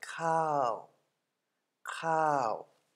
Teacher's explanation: High class consonant, hoher Anfangskonsonant, zweites Tonzeichen, second tone mark, living syllable, therefore falling tone.